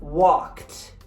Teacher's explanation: This, however, is actually the ed, but it changes to a t sound when it comes after a consonant that is expressed with a voiceless pronunciation. That is a voiceless consonant.